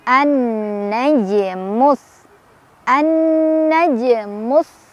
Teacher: Jim ya, jimnya sukun. Jadi cara bacanya dipantulkan tapi pantulannya tipis aja, ngalir karena kita langsung baca ke huruf berikutnya. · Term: qalqalah sughra